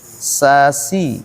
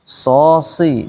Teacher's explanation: Huruf shad ini dia beda sifat dengan sin. Kalau sin hurufnya huruf istifal, kalau shad huruf isti'la. Isti'la artinya ke atas, udaranya ke atas diarahkannya. Kemudian selain isti'la dia juga itbaq, sehingga disebut dengan musta'liyah mutbaqah.